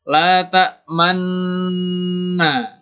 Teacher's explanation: jadi ketika kita menahan huruf nunnya itu, bibir kita sambil dimonyongkan. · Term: ismam